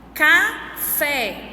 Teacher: A sílaba mais forte que eu pronuncio é o fé, que é a última sílaba. Então, a gente pode dizer que ela é uma oxítona.